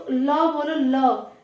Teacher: ये जो आवाज आ रही है वो जीभ के अगल बगल से आ रही है, जो हवा, तो ये पार्श्व से आ रही है